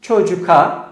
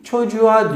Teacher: İki ünlü arasında kalan k'nin biz yumuşadığını görüyoruz. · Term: Tonlulaşma